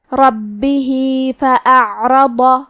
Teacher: کلمت فأعرض میں حرف العین کی ادائیگی حلق کے درمیان والی حصے سے ہے. کیونکہ یہاں عین ساکن ہے لہذا ہمیں عین کو ظاہر کرنا ہے. · ضاد کو ہم زبان کے کروٹ اور اوپر کے داڑھوں کی جڑ سے پڑھیں گے. کیونکہ ضاد حروف التفخیم میں سے ہے تو ہم یہ حرف کو بھاری آواز میں اور منہ پھلا کے پڑھیں گے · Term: حرف الضاد